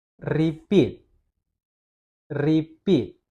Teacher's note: Dia lebih tekankan pitnya dibanding dengan re-nya. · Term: syllable stress